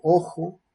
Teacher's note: Aquí se representa con este símbolo que en la escritura es el símbolo que se utiliza para representar la letra X, pero aquí en el alfabeto fonético internacional es el símbolo que se utiliza para representar una articulación velar, es decir, el cierre se produce o la estrechez se produce en la zona velar, fricativa, con forma de fricción y sin vibración de cuerdas vocales